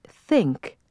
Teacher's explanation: now hold your finger on your throat again and say think there's no buzz on the th this time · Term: voiceless consonants